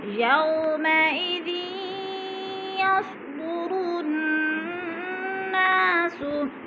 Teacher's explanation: ना पे गुना हो रहा है, सख्ती से पढ़ेंगे, जमा के पढ़ेंगे, और नून मुशद्दद है और अलिफ मद्दा है।